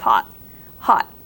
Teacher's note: some people don't even pronounce the T at the end of hot